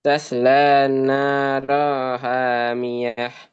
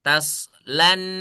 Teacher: itu lamnya gak boleh dimasukin ke ke nun. Jadi bacanya jangan taslan da ya. · Lamnya jangan ditasdidkan ke nun.